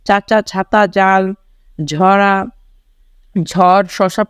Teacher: যেমন চাচা, ছাতা, জাল, ঝরা, ঝড়, শশা প্রভৃতি শব্দ তলিবশ তালব্য ব্যঞ্জনের উদাহরণ। অর্থাৎ জিভের সামনের অংশকে শক্ত তালু বাধার সৃষ্টি করে বায়ুপথে · তালব্য ব্যঞ্জন হচ্ছে যেসব ব্যঞ্জন ধ্বনি উচ্চারণের সময় জিভের ডগা খানিকটা প্রসারিত হয় শক্ত তালুর কাছে বায়ুপথে বাধার সৃষ্টি করে সেগুলোকে তালব্য ব্যঞ্জন বলে।